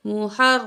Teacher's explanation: را کو موٹا پڑھیں گے اور سختی سے بھی پڑھیں گے